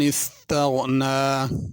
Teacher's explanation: इस्तग़ना गैन को पुर करके पढ़ेंगे और नून पे खड़ी ज़बर है, अलिफ की तरह इसे पढ़ा जाएगा।